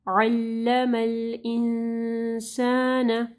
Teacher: عین کے مخرج کو واضح پڑھنا ہے، حروف حلقی میں سے ہے، گلے کے درمیانی حصے سے پڑھا جاتا ہے. انسان، نون ساکن کے بعد سین ہے، اخفا غنہ ہوگا یہاں پہ.